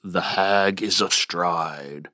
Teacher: The beats fall on the syllables hag and stride, which, of course, are the meaning-bearing sounds of the line.